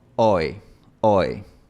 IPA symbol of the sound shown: oɪ